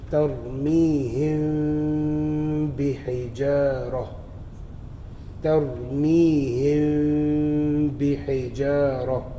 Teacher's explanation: On page 42, if you look at al-ikhfa shafwi, ikhfa shafwi is performed when ghunna, with ghunna, when mim sakina comes before the letter ba. The mim is pronounced unclearly by slightly parting the lips when pronouncing it.